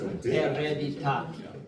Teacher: we don't pronounce any of the H's